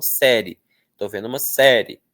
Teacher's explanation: As pessoas muitas vezes falam série. Estou vendo uma série. Como se tivesse uma vogal só.